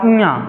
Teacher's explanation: जब इया कहेंगे तो नाक में देखिए कुछ कंपन जैसे हो रहा है तो ये जो है इन सब का उच्चारण नाक से होता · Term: अनुनासिक